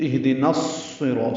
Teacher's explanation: نا الف مدہ ہے لیکن الصراط کے صاد سے ملا دینا ہے، یہ حمزہ عارضی ہے، نون کو صاد سے ملا رہے ہیں، لام نہیں پڑھا جائے گا، یعنی الف لام نہیں پڑھیں گے، ادغام شمسی ہوگا۔